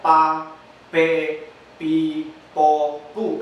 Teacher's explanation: se obstaculiza el aire en los labios, y ahí es donde necesita la ayuda de una vocal para poder salir el aire como una explosión y producir un sonido. · Pero recuerde que para que suene así, ya va acompañado de otro sonido que sería vocálico. Entonces, mientras el aire viene de nuestro cuerpo saliendo, se obstaculiza específicamente en el cierre de los dos labios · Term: oclusivo